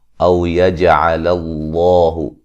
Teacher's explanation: او یجعل اللہ، جیم پہ قلقلہ کریں گے، لفظ اللہ کو موٹا ادا کریں گے، اس سے پہلے حرف پر زبر ہے